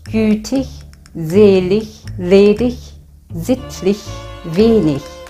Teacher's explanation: the words that are ending with tig, dig, lig, lich and nig will be pronounced like [ç].